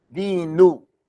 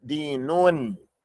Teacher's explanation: It's a noon at the end of the word that's pronounced.